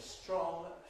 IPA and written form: strɒŋ (strong)